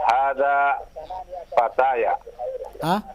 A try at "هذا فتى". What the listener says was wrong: هذا فتى. Fatan dengan tanwin, fatan.